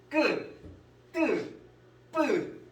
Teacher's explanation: 된 소리 같은 경우는 뭐라고 알고 계셔야 되냐면 긴장이 있어요. 긴장이 있는 소리고요.